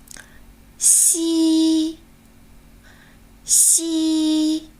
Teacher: 舌面前部抬起，靠近硬腭，形成一条窄缝，让气流从中摩擦而出。